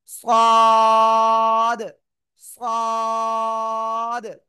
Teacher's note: তো এখন আমরা যে অক্ষরটা শিখতেছি সে অক্ষরটা হলো এই অক্ষরটা জিহ্বার আগা সামনে নিচে দিদের পেটও আগের সাথে লাগিয়ে একটু মোটা আওয়াজে উচ্চারণ করতে হবে চার আলিফ টান হবে